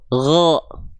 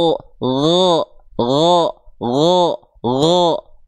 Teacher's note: Mulutnya cukup buka, pangkal lidahnya naik. Tebal nanti hurufnya.